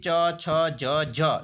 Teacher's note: ચ છ જ ધ્વનિ જૂથ એ કેવું છે તો તાલવ્ય છે